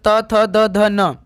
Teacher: दंत ध्वनियां जिसका उच्चारण स्थान दंत से होता है। जैसे त वर्ग जितने भी त वर्ग के होते हैं ये दंत में होते हैं।